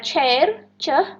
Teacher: Nih, seperti pada kata chair, c. Itu dia voiceless, post-alveolar, dan affricate.